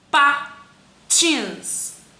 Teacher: Tins é a sílaba tônica. É a última.